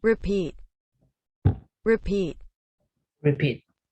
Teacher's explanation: Una R sin tocar el paladar, ¿no? Sin que la lengua toque el paladar. Entonces sería R, ¿sí?